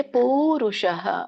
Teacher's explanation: ಪಕ್ಕೆ ದೊಡ್ಡ ಊ ಕೂಡಿದೆ, ಹಾಗಾಗಿ ಪೂರುಷಃ ಹೇಳಿ ಆಗುತ್ತೆ